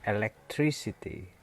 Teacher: bunyi ke-nya hilang jadi s tuh.